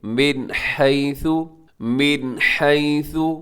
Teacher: نون ساکن ہے اور نون ساکن کے بعد حا حروف حلقی میں شامل ہے، اب یہاں پہ اظہار کریں گے